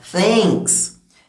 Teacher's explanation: realmente você coloca a língua pra fora pra falar